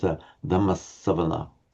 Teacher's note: If you said dhamma savana, you'd be understood, but it would be it would be wrong. So you do have to hold that double S